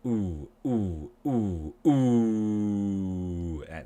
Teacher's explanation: So we make a circle with our lips, the ooh, and our tongue goes back, and the tongue gets tight. Tongue goes back, tongue gets tight. And like all vowels, we breathe out and vibrate our vocal cords.